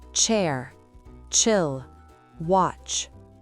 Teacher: Il commence par un petit son t caché.